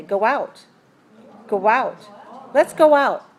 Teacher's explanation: we don't write with a w but we should hear it at the end especially when we want to link it to a the next